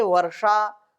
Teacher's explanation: अब इसमें जो षा है ये मूर्धन्य षकार होगा